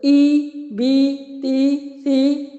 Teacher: کسرہ کو بہت معروف طریقے سے پڑھا جاتا ہے، شارپ کر کے پڑھا جاتا ہے